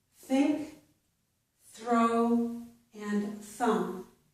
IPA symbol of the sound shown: θ